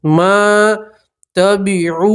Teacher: واو مدہ اس لیے کھینچ کے پڑھیں گے ایک الف کے برابر